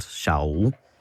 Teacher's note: Like East Perthshire, double vowels don't become a diphthong.